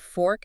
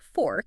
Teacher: If I say the word fork, it's just a burst of air. You get that fricative F sound at the front